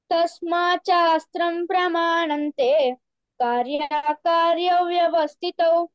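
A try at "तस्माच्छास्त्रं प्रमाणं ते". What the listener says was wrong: ఈ తస్మాత్ శాస్త్రం ఆ ఛా కింద చా వస్తుంది కదా, కొంచెం గట్టిగా చెప్పు, సరేనా? మహాప్రాణం.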